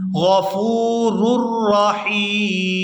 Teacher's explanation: وقف کی صورت میں میم جو ہے یہ ساکن ہو جائے گی